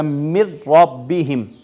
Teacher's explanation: نون کا ادغام ہوا را میں، نون کا جب را میں ادغام ہوا تو نون کا حرف نون تو نہیں رہا اب یہاں پہ، وہ تو را میں مدغم ہو گیا، لیکن نون کی آواز بھی باقی نہیں رہی، نون کی صفت بھی باقی نہیں رہی۔ · نون کی آواز بھی باقی نہیں رہی، نون کی صفت بھی باقی نہیں رہی۔ تو ایسا ادغام جس میں پہلے حرف کی صفت بھی باقی نہ رہے، تو ایسا ادغام جس میں پہلے حرف کی صفت تک باقی نہ رہے، اس کو ادغام تام کہتے ہیں۔